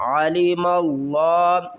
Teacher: علم اللہ، عین زبر آ، لام زیر لی، عالی، میم کو لفظ اللہ کے لام سے ملائیں گے، اس الف اور اس لام کو نہیں پڑھیں گے